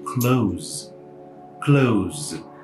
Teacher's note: Esse S, inclusive, ele tem um som de Z.